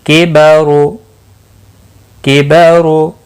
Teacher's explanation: را پیش کی وجہ سے پر پڑھا جائے گا. یہاں پر بھی را پیش کی وجہ سے پر پڑھا جائے گا.